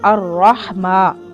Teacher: रा को मोटा पढ़ेंगे, तशदीद भी अदा करनी है साथ।